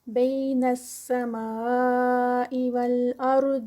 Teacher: سمائی میں جو ہے وہ مد متصل ہے, 4 کاؤنٹس کا اسٹریچ